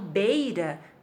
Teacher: vocês percebem que o som do E é mais forte que o som do I. Então, o E é a vogal e o I é a semivogal, tá?